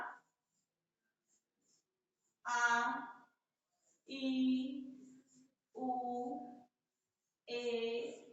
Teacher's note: जिनके उच्चारण में ध्वनि केवल मुख से निकले उसे निरोनुनासिक स्वर कहते हैं